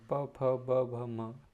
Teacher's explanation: इसको हम बोलने के लिए ओष्ठ का इस्तेमाल करते हैं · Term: ओष्ठ व्यंजन